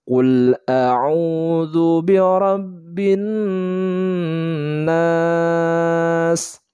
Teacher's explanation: Nah, diperhatikan di sini ada huruf nun bertasydid, hukum bacaannya adalah gunnah. Jadi dibacanya didengungkan, ditahan 2 harokat.